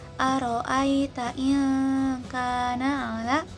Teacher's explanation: melafalkan nun secara samar dengan dengung dibarengi persiapan makhraj kaf. Setelah itu lafalin kaf berharokah. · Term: ikhfa